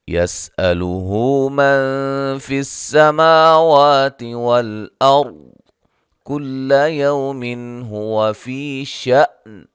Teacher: يَسْأَلُهُ مد اصلی ہے، نون ساکن کا یہاں اخفا ہے